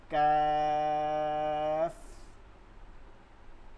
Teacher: কাফটা হচ্ছে জিহ্বার গোড়া থেকে একটু আগে বাড়া